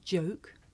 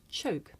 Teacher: the voiced sound that you hear at the beginning of the word joke and its voiceless partner that you hear at the beginning of the word choke